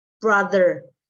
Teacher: Ketika kita bilang do, brother, ada getaran di tenggorokan, signifikan sekali. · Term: voiced